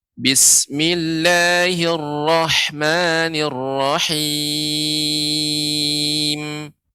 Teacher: karena kita wakafkan, kita berhenti pada huruf mim, maka mim pun menjadi huruf kita sukunkan. Ya, tidak dibaca.